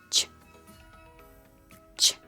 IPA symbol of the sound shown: ch